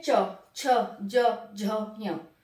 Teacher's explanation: तालु में क्या होता है, जीभ ऊपर तालु को टच करेगी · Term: तालु वर्ग